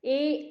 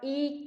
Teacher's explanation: जैसे कि ई और ए वर्ण, इन वर्णों का प्रयत्न तुल्य है और तालु स्थान भी समान ही है, परंतु ए का ई से कंठ स्थान अधिक है, अतः इनकी सवर्ण संज्ञा नहीं होती। ए का उच्चारण स्थान कंठ और तालु है और ई का उच्चारण स्थान तालु ही है, कंठ नहीं है।